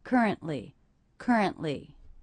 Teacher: in this 3-syllable word, I noticed that stress is on the first syllable. · I did not hear the release of this T. · I heard currently with a stop. That's a stop T.